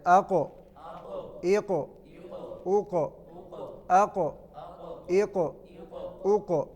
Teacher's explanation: اب قاف جو ہے وہ موٹا حرف بھی ہے اور حروف قلقلہ میں سے بھی ہے، لہذا اس میں قلقلہ کرنا ہے.